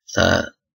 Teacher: Berikut adalah daerah artikulatoris ee apikodental ya Mengapa dikatakan apikodental karena bunyi ini terjadi adanya pertemuan ujung lidah dengan Gigi